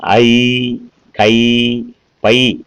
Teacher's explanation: இந்த ஐகார எழுத்து தனித்து வரும் இடங்களிலே தனக்குரிய 2 மாத்திரை அளவில் முழுமையாக ஒலிக்கிறது